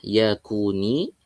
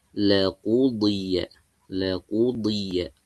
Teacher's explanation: Di kaf tipis, qaf tebal, ya, harus dibedakan.